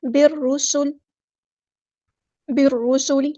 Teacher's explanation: را ہمارا heavy letter پورا ادا کریں گے. سین ہمارا ہیوی لیٹر نہیں ہے بلکہ یہ لائٹ ہے. سین سیٹی کے ساتھ پڑھیں گے حروف صفیریہ میں سے. بالرسل، بالرسل، لام کی زیر کو ہم لمبا نہیں کریں گے.